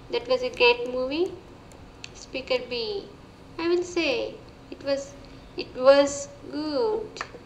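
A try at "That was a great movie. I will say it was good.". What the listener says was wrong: Again, more intonation issues. So here, I would say that was a great movie. I'll say it was good.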